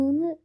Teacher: Amma m-nı tələffüz eləsəz, samitləri, bu zaman dodaqlar bir-birinə dəyir və dodaqlar bir-birinə mane olur.